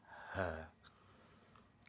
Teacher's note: Li yang pertama adalah Hames Hames itu artinya samar dalam artian nafasnya tidak tertahan jadi di saat dikeluarkan maka akan ada nafas yang keluar